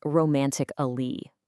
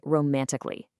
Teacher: I'm just hopping right over that A.